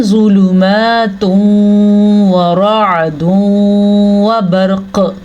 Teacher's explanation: نون تنوین کے بعد واو آیا ہے تو ہم ان دونوں کو آپس میں ملا بھی دیں گے اور غنہ بھی کریں گے · قاف پہ وقف کی صورت میں قاف پہ قلقلہ ہوگا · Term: ادغام بالغنہ